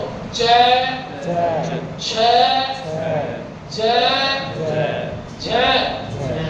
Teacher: इन व्यंजनों के बोलने से स्पर्श का जो समय होगा ना घर्षण का समय ज्यादा रहेगा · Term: स्पर्श संघर्षी